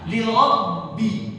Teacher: Ada bunyi huruf ba yang ketahan.